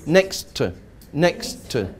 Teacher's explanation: Here we've got a word ending in T. A word ending in T next to a word beginning with T. So we make it one T sound for both words.